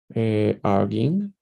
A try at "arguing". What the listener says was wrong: Close, it's not bad. Just try to make the u more noticeable, like arguing, arguing, arguing.